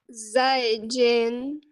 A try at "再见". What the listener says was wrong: Отлично. Не надо тянуть.